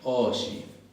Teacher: Se escribe oji, pero esa ji se palataliza, se pronuncia no como nosotros pronunciamos la J, en palabras como Juan, sino un poquito más adelante